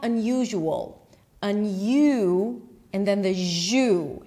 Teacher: Now the S represents a zh sound, which is not something that you usually associate the S with.